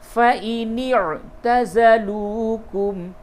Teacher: نون کو عین سے ملائیں گے